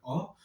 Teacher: मध्य स्वर जिसका उच्चारण जिह्वा के मध्य भाग से किया जाता है, उसमें एक ही स्वर आता है जिसका नाम है अ।